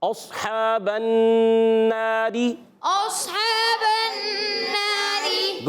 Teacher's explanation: را کے نیچے زین آنے کی وجہ سے را باریک ہو جائے گی · جیسے با کا زبر نون کے سے مل گیا، اب نون الف زبر نا، یہ الف مدہ ہے، ایک الف کھینچیں گے. نون مشدد میں ایک الف کا غنہ بھی کریں گے اور پھر ایک الف کھینچیں گے بھی